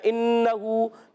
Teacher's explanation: نون مشدد ایک الف کا غنہ ہوگا، ہو کو ایک الف کھینچیں گے، طغا، طا موٹے حروف میں سے، ایکسٹرا موٹے حروف میں سے قرآن پاک کا سب سے موٹا حرف ہے طا۔